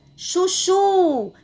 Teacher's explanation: a sílaba mais forte nessa palavra foi a última sílaba, o chu, porque eu falei com mais força, tá bom? Mais intensidade. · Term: oxítona